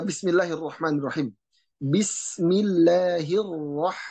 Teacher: dalam pengucapan huruf ro dia getar dan ada samarnya